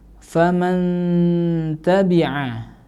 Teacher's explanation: di situ ada nun sukun bertemu dengan huruf ta. Maka di situ harus dibaca mendengung juga ya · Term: ikhfa